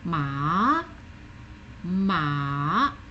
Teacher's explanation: the third tone starts quite low, goes a little bit lower, and then goes up.